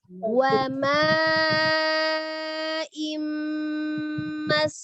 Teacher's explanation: monyongkan dulu kedua bibirnya ketika pengucapan huruf waw ya, tetapi wawnya tidak dipanjangkan, tidak wama, tapi wama.